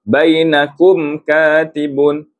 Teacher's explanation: Jadi di sini mim yang ada tanda sukun bacaannya jelas tanpa dengung. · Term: izharus syafawi